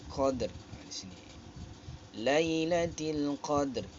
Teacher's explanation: memberikan sifat Nabar ataupun hentakan suara